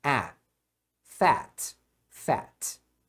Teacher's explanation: É um E bem aberto. Fat. Então, as palavras de uma sílaba que terminam em consoante, você vai pronunciar o A como A.